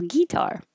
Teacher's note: it's less common but you might hear it putting stress on the first syllable